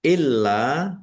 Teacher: lamnya dibaca double ada tasdidnya ditekan dan ditahan ya.